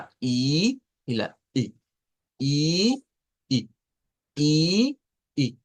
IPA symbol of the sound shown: ɪ